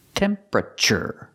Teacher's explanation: This is one of those words that looks like 4 syllables, but we don't say temperature. We say 3 syllables.